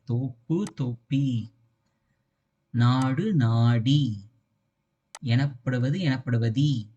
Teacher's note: இந்த ஊ sound ஈயா convert ஆகும் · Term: குற்றியலுகரம்